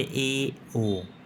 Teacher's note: जिनके उच्चारण में मुख संवृत के अपेक्षा कुछ अधिक खुलता है उसे अर्ध समृत अत आधा जैसे ए ओ विवृत जिन स्वरों